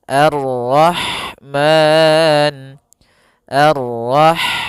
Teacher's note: Ha dia memiliki sifat hamas, yaitu maka harus mengalirnya nafas